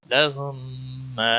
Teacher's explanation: میم ساکن کے بعد جب دوسرا میم آتا ہے تو وہاں پچھلا میم نہیں پڑھا جاتا ہے، اگلا مشدد میم پڑھا جاتا ہے ، اس کو ادغام شفوی کہتے ہیں، میم پر گنہ بھی